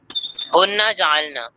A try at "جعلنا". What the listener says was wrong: نہیں ہننا نہیں ہے یہاں پہ، یہ اصل میں یہ جو کھڑا زبر ہے یہ الف، وہاں پہ لکھنے کا طریقہ ہے، اس سے ہو کو جوڑ دیا، اس لیے یہاں پر ایک کھڑا الف ہے جو کہ بتا رہا ہے یہ الف کے ساتھ ہے یہ نون۔